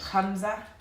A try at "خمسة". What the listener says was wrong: Khamsa. Sin, not zain. Remember. Khamsa.